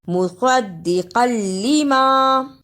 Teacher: مصدقا لما، اسے مصدقا لما نہیں پڑھنا، صاد کی جگہ پہ سین کی آواز نہیں آنی چاہیے۔ دال پر شد اور لام پر شد دونوں کو صحیح ادا کرنا اور قاف کو موٹا پڑھنا